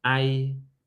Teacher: Irony. Where is the stress on irony? Of course, the first syllable.